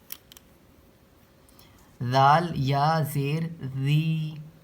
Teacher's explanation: اس میں زبان کی نوک ہلکی سی باہر نکلے گی